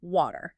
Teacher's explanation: It really does >> because if you just look at the letters on the page, W A T E R, it looks like it should have a very sharp hard T sound in the middle like water with a strong burst of air